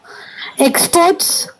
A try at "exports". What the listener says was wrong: You are telling as if experts. EXPERTS. I am hearing like that. exports. Export. திறந்து நல்லா எக்ஸ்போர்ட் அப்படி சொல்லணும்.